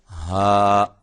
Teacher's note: ہا اس کو ہم نے حلق کے انتہائی حصے سے ادا کرنا ہے جو کہ سینے کے قریب ہے. ہا اس کو ہا نہیں کہنا, ہا.